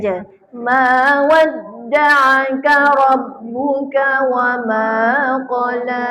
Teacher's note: Jangan lama sangat qala tu. Qala tu semua kat situ dua harakat.